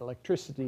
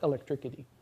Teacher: Um or that when you add -ity to something ending in -ic like electric, that the K sound at the end of -ic will be pronounced like an S